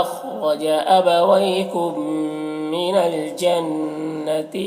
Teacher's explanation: میم ساکن کے بعد میم ہے تو میم کو میم سے بدل کر غنہ کے ساتھ پڑھیں گے ، اس کو ادغام شفوی کہتے ہیں، میم سے میم ملا